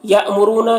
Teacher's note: یہاں پر حمزہ ساکنہ ہے، جھٹکا لگے گا، را کو اوپر پیش ہے، را کو اوپر پڑھیں گے.